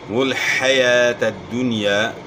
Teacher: حا کی آواز گلے کے درمیان سے نکالنی ہے، کھڑا زبر ہے، اس کو آپ نے ایک الف کی مقدار کے برابر کھینچنا ہے.